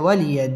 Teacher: ওয়াও ঠোঁট গোল করে উচ্চারণ করতে হবে।